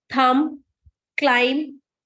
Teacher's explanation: Whatever is ending with B here, B is not having any sound in the pronunciation.